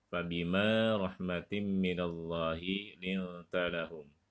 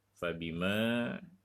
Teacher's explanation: huruf mimnya dibaca panjang karena ada huruf alif. Huruf alif itu adalah huruf mad tabi'i.